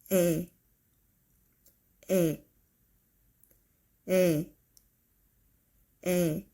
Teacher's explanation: just know that those two vowels have same 에 sound.